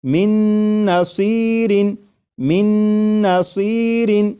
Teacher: میم کے بعد نون مشدد جو ہے اس کی آواز آئے گی اور غنہ کے ساتھ پڑھیں گے